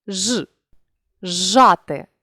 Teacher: свистячий плюс шиплячий дали у вимові шиплячий подовжений